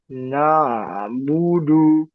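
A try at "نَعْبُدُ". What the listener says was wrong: na'budu. Ya, panjangin sedikit lagi. Ain. Na'budu.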